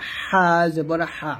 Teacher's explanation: হা টা কন্ঠনালের মাঝখান থেকে